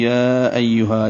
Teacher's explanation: اکٹھے پڑھتے ہیں تو مد منفصل 4 حرکات لمبا کریں گے